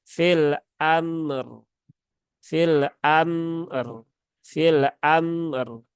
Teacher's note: rnya Ini dia berhubungan dengan fathah maka dia dibaca dengan tebal atau tafkhim